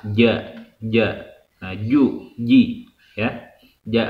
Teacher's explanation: tengah-tengah lidah bertemu dengan langit-langit atas akan tetapi tidak sampai nempel